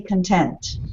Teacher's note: the shift goes to the second syllable